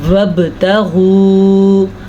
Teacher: با پہ قلقلہ ہوگا کیونکہ با حروف قلقلہ میں سے ہے